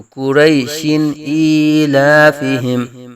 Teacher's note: دو زیر کی تنوین کے بعد حروف حلقی میں سے حمزہ آنے کی وجہ سے یہاں اظہار حلقی ہوگا نون تنوین کے اندر ، تو قریشن ایلافہم، تو یہ ہوگا وصل میں ملا کر